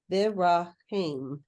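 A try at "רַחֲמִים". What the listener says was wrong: Chaim. You have to kind of get that guttural out. Chaim.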